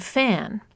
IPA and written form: fæn (fan)